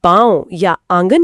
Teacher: लेकिन अनुनासिक एक बहुत ही कोमल ध्वनि है। जब हम पांव या आंगन कहते हैं तो हवा हमारे मुंह और नाक दोनों से एक साथ बाहर आती है। बिल्कुल वो लघुता इसी वजह से है कि दबाव किसी एक जगह पर केंद्रित नहीं है।